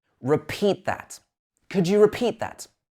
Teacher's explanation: Miss off the T at the end of the repeat.